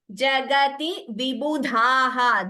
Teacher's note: Dha is Mahaprana there.